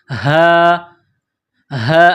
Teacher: یہ گول ہا ہے چشمے والی، صرف منہ سے ہوا نکالنے کی طرح اس کو پڑھتے ہیں۔